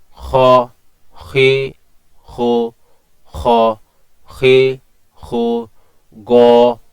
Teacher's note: এগুলো কিন্তু হরফে মুস্তাতালিয়া পাশাপাশি এগুলো আপনার মোটা হবে